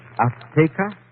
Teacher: She gave the Z a TH sound. That's Castilian Spanish. Mexican or any Spanish American would say Azteca.